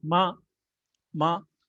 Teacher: The fourth tone starts from the high and ends low